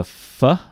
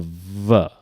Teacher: So F is voiceless and V is voiced